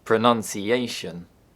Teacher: pronunciation, which puts a secondary stress on the second syllable. Secondary stress is weaker than primary stress, and it only occurs in long words.